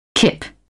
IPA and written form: kɪp (kip)